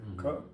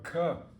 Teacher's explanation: the first k is unaspirated, and then the second one is aspirated.